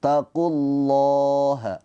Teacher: Nah, lafadz Allah dibaca dengan tafkhim tebal karena sebelumnya didahului oleh harokat dhammah. Ketika didahului harokat dhammah atau fathah dibaca tafkhim tebal pakai o.